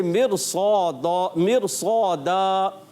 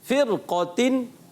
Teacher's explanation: ویسے تو کیا ہوتا ہے, را ساکن سے پہلے زیر آ جائے تو را کو باریک پڑھتے ہیں, مگر جب را ساکن سے پہلے زیر بھی ہو اور اسی کلمے کے اندر اگلا حرف مستعلیہ والا ہو تو کیا ہوتا ہے, وہ را پر ہو جاتی ہے, موٹی پڑی جاتی ہے